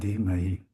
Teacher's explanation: the duh is an aspirated D is a D. It's so this is one letter D.